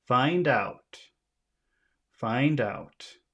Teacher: the first one is usually longer so you make find bigger than out